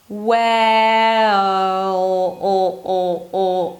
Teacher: It's really deep and dark, oh. I don't even have to bring the tip of the tongue to touch the upper palate to make the L sound, the dark L sound, because it's more about that tense sound right before the L, oh, than it is about actually making the L sound.